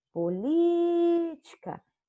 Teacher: Política é proparoxítona, pois o li, política, é a sílaba mais forte, sendo a sílaba tônica. Olha lá, proparoxítona, política, o li tem acento.